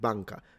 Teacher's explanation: So from an Italian perspective, it's like the N in the word banca. We fully nasalize it, banca. It's fully nasalized. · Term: nasalized N